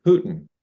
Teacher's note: as is typical with far rural, far urban, we would have the ing being dropped. So hooting would be hootin'.